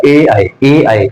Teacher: ए आई को कंठ तालु से। ए आई ए आई कंठ और तालु से बोला जा रहा है। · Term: कंठ तालव्य